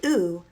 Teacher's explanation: makes a high back rounded vowel sound